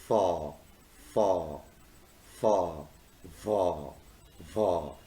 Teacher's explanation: They originate when there is a friction between the lower lip and upper teeth. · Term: labiodental sounds